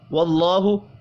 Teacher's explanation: اللہ کا نام زبر کی وجہ سے پر پڑھا جائے گا